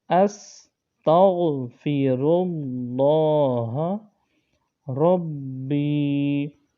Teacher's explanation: اللہ تعالیٰ کے لام کو یہاں موٹا پڑھا جا رہا ہے